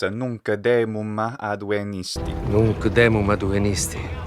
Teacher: They add a little vowel sound, something like a schwa normally, or an e, after a lot of final consonants. So I hear nunc demum here instead of nunc demum.